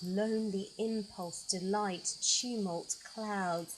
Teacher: There's elongated vowel sounds which softens those lines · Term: long vowel sounds